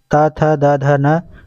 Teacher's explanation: त वर्ग त थ द ध न का उच्चारण स्थान दंत है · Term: दंत ध्वनि